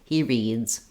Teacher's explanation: But if I have a word like that ends with a voiced sound, like read, and I add an S, I'm going to have the Z sound. Because my D is voiced, then letter S says Z, reads. He reads.